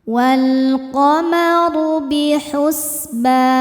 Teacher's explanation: Huruf ra dibaca tafkhim karena berharokat dhammah. Cara bacanya tebal.